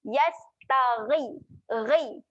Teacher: Ghain makhrajnya di hujung kerongkong. Dekat kerongkong yang nak ke pangkal lidah tu. Ya. Jadi bunyi dia tasir dekat situ. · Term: huruf ghain